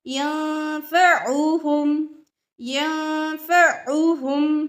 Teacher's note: पेश की वजह से होठ गोल होंगे